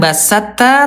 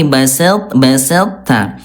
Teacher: cara bacanya sempurnakan sifat tebalnya to dulu baru ke ta. Ya, jadi bunda bukan basatta tapi baselta.